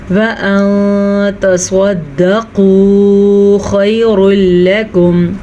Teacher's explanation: نون ساکن کے بعد تا ہے جو کہ حروف اخفاء میں سے ہے، تو ہم نون ساکن کو چھپے ہوئے غنّے کے ساتھ پڑھیں گے